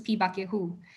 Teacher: you can actually see the tone on hu fall. So and it's not the same as it were in Hokkien.